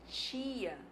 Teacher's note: gente fala tia o que que acontece esse T Na verdade ele tá assimilando o traço palatal do I porque eu ia é uma vogal anterior mas a língua vai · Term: assimilação